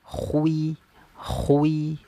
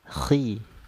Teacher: ketika dia berharakat kasrah nanti ya berharakat kasrah dia kadar tebalnya berkurang